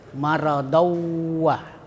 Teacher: jadi tanwinnya itu dimasukkan ke waw atau ditasdid.